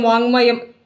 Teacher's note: എന്താണ് മ എന്ന് വന്നതുകൊണ്ട് നമുക്ക് അത് എന്താക്കണം അതിന്റെ അനുനാസിക അക്ഷരം കൊടുക്കണം ക യുടെ അനുനാസികമാണ് ങ്ങ